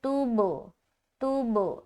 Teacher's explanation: जैसे कि ता को जब बा से मिलाया और जुदा किया तब कलकला होगा